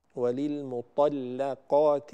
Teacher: فينبغي أن نحافظ على ترقيق اللام. وللمطلقات بهذا الشكل.